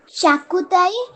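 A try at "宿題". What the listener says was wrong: शाह है क्या वो?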